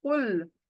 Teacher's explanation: काफ हलक के अंदर से इसका मखरज हलक के अंदर है। कुल लाम को हिलाना बिल्कुल नहीं है। · تو سب سے پہلے دیکھیے یہاں پہلی آیت، قل، قاف حلق کے اندر سے، اس کا مخرج حلق کے اندر ہے. قل، لام کو ہلانا بالکل نہیں ہے، سنگل لام ہونا چاہیے.